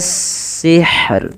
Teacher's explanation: rohnya juga tetap dibaca dengan bacaan tipis rohnya